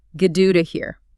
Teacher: the tongue just briefly bounces against the roof of the mouth, creating a very soft D sound. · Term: alveolar flap